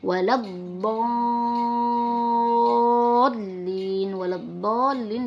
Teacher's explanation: Alaihim waladdallin, di situ ada ad-dallin, di situ ada lam alif, setelahnya huruf dhad, di mana kita tahu huruf dhad di sini adalah huruf syamsiyah. Jadi lam alifnya harus dimasukkan atau diidghamkan ke dalam huruf dhad, di mana sering kita sebut dengan idgham syamsiyah.